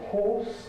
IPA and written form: hɔːs (horse)